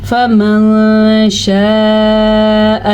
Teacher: نون ساکن کے بعد شین حروف اخفا میں سے آیا تو یہاں پہ اخفا بھی ہوگا اور کسی قدر غنہ بھی ہوگا